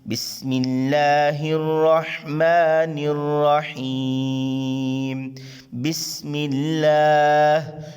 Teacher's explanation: بسم اللہ، شروع میں دیکھیں سین ہے، باریک سیٹی سے ادا کریں گے.